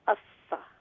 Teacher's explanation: سا زبان کی نوک ثناء الیاء کے کنارے کے ساتھ لگنے سے ادا ہوتا ہے